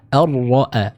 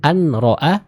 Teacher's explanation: Huruf nun dimasukkan ke huruf ra. Jadi seolah-olah huruf nunnya hilang karena langsung dimasukkan ke makhraj dari huruf ra ya. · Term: idgham